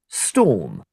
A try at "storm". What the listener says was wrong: mạnh ra âm o dài ra em. O. Storm.